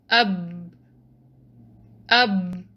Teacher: For example, letter ba, if you put a hamza with fatha before it, so it becomes ab. You will feel that this letter is coming from lips. It's not coming from throat, tongue, or the nasal passage.